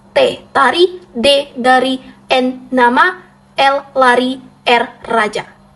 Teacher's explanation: bunyi yang dihasilkan dengan menempatkan ujung lidah pada gusi atas yang terletak tepat di belakang gigi atas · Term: hambatan alveolor